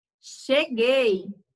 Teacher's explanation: Também ele é um tritongo oral. A gente não precisa estar pronunciando ele pelo nariz. Quão. Quando a gente fala quão, ele, o som dele, ele sai mais pelo o nariz.